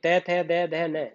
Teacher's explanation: ये दंत से बोले जाएंगे